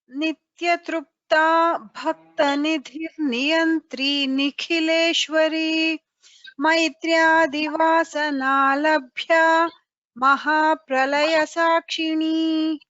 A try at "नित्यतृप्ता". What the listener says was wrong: Nitya Tripta, I could hear a slight ukara there. Nitya Tripta, it's not true, it's